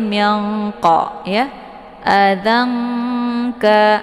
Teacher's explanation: Nun posisinya di ujung lidah sementara Kaf pangkal lidah agak sedikit Turun ke bawah ya maka bacaannya sama seperti minqo yaangka jadi E kalauaad ini lebih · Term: Ikhfa ab'ad